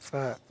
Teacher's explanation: নিচের ঠোঁটের পেট সামনের উপরের দুই দাঁতের আগার সঙ্গে লাগাইয়া ফা উচ্চারিত হয়